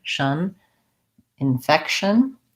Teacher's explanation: I think we pretty much say that with a K and an SH sound. And this TION has a little bit of a schwa vowel un, but we go almost from the SH right to the N